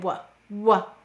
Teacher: let's place our hand on our throat and say w w notice it's a voice sound